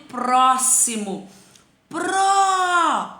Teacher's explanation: próximo é no pro né mas aí é um timbre aberto